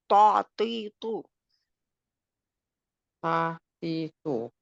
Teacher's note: it's heavy, and the tip of your tongue touches the edge of your two upper teeth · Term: makhraj